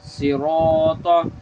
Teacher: ज़ेर सी, रा अलिफ ज़बर रा, सिरा, तो ज़बर तो, सिरात, ये रा भी पूर पढ़ेंगे क्योंकि रा के ऊपर ज़बर है और अलिफ मद्दा का कायदा भी हो रहा है यहाँ पे।